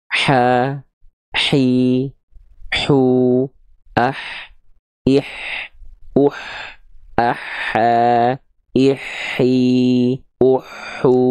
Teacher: H kecil dilafalkan dari sini. Tepat pada bagian tengah tenggorokan, tepat pada bagian organ katup epiglotis.